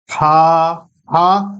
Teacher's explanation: اس کے بعد باری آتی ہے جیم. ہا، ہا حلق سے نکالنا ہے، تھوڑا سا اس میں زور لگے گا